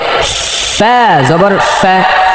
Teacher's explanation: সামনের উপরের দুই দাঁত নিচে ঠোঁটের পেটে লাগাতে হবে বাতাস বের করতে হবে